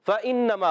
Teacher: اوپر والے دانتوں کے کنارے سے جب کنارے نیچے والے ہونٹ کے تر حصے سے لگیں گے فا ادا ہوگا